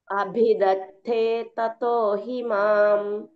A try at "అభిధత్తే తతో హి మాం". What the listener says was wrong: రెండో వారు థే అనే చోట ఒత్తు థాలాగా వినిపించింది. కొద్దిగా ఒక్కడు కరెక్ట్ చేసుకుంటే అయిపోతుంది.